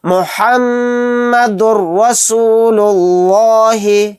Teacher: تنوین کے بعد را آ گیا تو یہاں پر ادغام بلا غنہ کا قاعدہ ہوگا، یعنی یہاں پر غنہ نہیں کریں گے، یہاں پر دال کو را میں ملا کر جلد پڑھیں گے۔